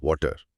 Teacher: یہاں ٹی ایک ہلکی ڈ جیسی آواز میں بدل جاتا ہے، تو یہ واڈر بن جاتا ہے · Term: فلیپ ٹی